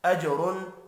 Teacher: جیم ساکن پر قلقلہ کریں گے، را پر پڑھا جائے گا۔ غیر، اب یہاں پر تنوین کے بعد غین ہے، اظہار حلقی ہوگا، غنہ نہیں ہوگا، غین پر بھی پڑھا جائے گا۔